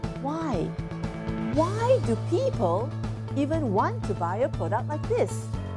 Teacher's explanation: So you stress on the word why, and your pitch will go up and down.